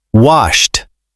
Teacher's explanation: It sounds like a quick T at the end.